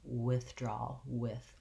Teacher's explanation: in this word, it's an unvoiced TH, voiceless TH.